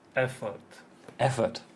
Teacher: So where's the stress? The first syllable on the F.